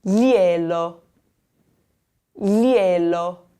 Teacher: there's the GL combination where it's going to come from the back of your throat, and then there's an L followed by an O, which is going to be a sound that comes from the tip of your tongue.